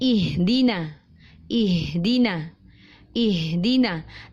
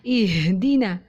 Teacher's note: Tidak terlalu menekankan huruf H sampai turun ke bawah dada dan dadanya bergetar. Karena huruf H makhrajnya bukan di dada tetapi di pangkal tenggorokan.